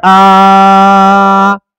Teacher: الف مدہ کو ایک الف کے برابر کھینچ کر پڑھیں